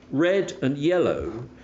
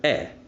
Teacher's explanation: in English red and yellow share the same front unrounded half open vowel eh